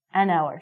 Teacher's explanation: because this word hour sounds like a vowel, because the H is silent, we have to say an hour.